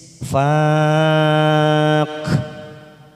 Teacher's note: ujungnya ada huruf kaf, maka ada sifat hamas, ada desis.